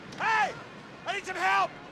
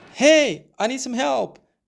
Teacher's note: some here is something that we don't need to put a lot of stress on right now